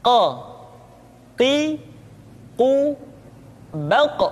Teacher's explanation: diucapkan dengan cara menyentuhkan pangkal lidah kita dengan langit-langit bagian belakang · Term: huruf qaf